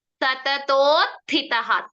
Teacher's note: ಥೋ ಅಲ್ಲ ಥಿ ಗೆ ಮಾತ್ರ ಮಹಾಪ್ರಾಣ